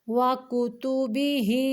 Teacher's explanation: کاف کے اوپر بھی پیش ہے، تا کے اوپر بھی پیش ہے، ان دونوں کی ادائیگی کے وقت ہونٹوں کو تھوڑا سا گول کریں گے